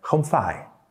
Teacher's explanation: the most neutral one where you start high and end low and don't go up again